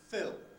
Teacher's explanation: if we take the verb to fill fill on its own that has a dark l at the end because it's not followed by a vowel